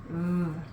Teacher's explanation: when you make the sound vv for van, your throat vibrates. VV. The letter V is a voiced sound.